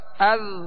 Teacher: اب ذال کو نرمی سے پڑھنا ہے مگر قلقلہ اس میں بھی نہیں ہوگا, باریک اور نرمی.